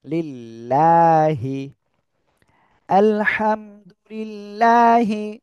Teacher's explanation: আল্লাহ শব্দের লাম এর ডান পাশে দেখেন জের রয়েছে তাহলে কি হবে চিকন করে পড়তে হবে